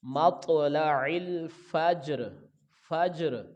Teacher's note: را پر وقف ہو جائے گا تو یہ را کی زیر نہیں پڑھیں گے، را ساکن ہو جائے گا۔